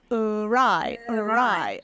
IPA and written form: əraɪ (awry)